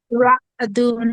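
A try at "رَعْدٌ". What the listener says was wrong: হ্যাঁ হ্যাঁ, আইনের মধ্যে একটু চাপ লাগবে। রাদুন।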